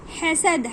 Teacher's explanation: حلق کے بیچ سے ہا نکالیے